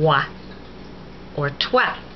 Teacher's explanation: OI is always pronounced wa, as in moi, or toi.